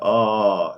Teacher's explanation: the tongue is very, very low